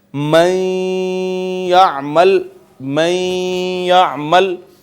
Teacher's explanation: या को मैंने पढ़ा है तो नाक में आवाज गई है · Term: गुना